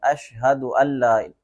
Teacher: حمزہ کو نون کے ساتھ نہیں ملائیں گے، حمزہ کو لام کے ساتھ ملائیں گے۔ اشہد اللہ، بیچ میں جو نون ہے یہ نہیں پڑھا جاتا۔